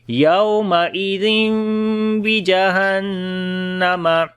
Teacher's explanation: نون کی آواز کو میم میں بدل دیں گے · نون کے اوپر شد غنہ کریں گے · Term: اقلاب